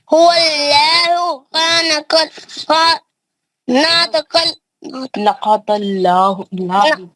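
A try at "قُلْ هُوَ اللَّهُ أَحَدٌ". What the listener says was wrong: गलत पढ़ रहा है और अल्लाह का नाम पतला पढ़ रहा भी.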